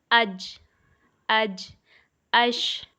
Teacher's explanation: شجر لسان جب اوپر تالو یعنی زبان کے بیچ سے لگے تو جیم، شین اور یا ادا ہوتے ہیں۔